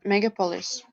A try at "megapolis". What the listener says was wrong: Ударение на вторую слог. Ты говорила мегаполис, что-то вот так вот.